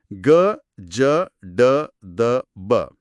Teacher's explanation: ಘೋಷ ಅಂದ್ರೆ ಗ ಜ ಡ ದ ಬ ಇವನ್ನ ಹೇಳುವಾಗ ವೈಬ್ರೇಟ್ ಆಗುತ್ತೆ